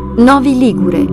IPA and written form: ˈnɔvi ˈliɡure (Novi Ligure)